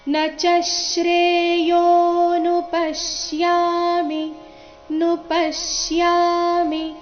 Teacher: ಪ ಮೇಲೆ ಆಘಾತ ಬರಬೇಕು, ಮುಂದೆ ಶ್ಯಾ ಎಂಬ ಸಂಯುಕ್ತಾಕ್ಷರ ಇದ್ದ ಕಾರಣ.